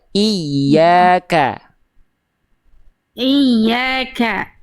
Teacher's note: Di huruf kaf memang huruf tipis, tapi jangan jadi ke. Iya kene bukan ke tapi ka.